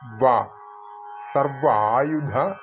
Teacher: മുകളിലത്തെ പല്ലുകൾ കീഴ്ചുണ്ടിൽ അമർത്തികൊണ്ട് ഉച്ചരിക്കേണ്ട വയാണ്